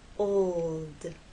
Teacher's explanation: l sound you must keep it pressed against that bump and there should be vibration the whole time from the o to the L and finally into the D